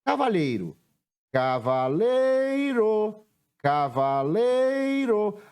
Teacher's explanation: a sílaba que eu demorei mais tempo pronunciando foi o lei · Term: sílaba tônica